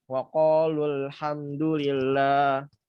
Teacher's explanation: Lalu cara bacanya ya dihilangkan salah satunya, yaitu yang dihilangkan wawunya. Sehingga dalam bacaan waqalu sudah tidak ada lagi mat tobi'ahnya, sudah tidak ada lagi matnya. Sehingga dibaca pendek.